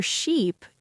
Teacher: For sheep, you hold that E sound longer, and your lips might stretch more.